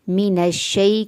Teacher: من الشیء کو تیزی سے ہم نے شیء کیوں پڑھا ہے یہ بھی میں یاد کروا دوں کہ یا ساکن اس سے پہلے والے حرف کے اوپر زبر ہوگی تو وہ یا لین ہے، اور لین کو ہمیشہ نرمی اور جلدی سے پڑھتے ہیں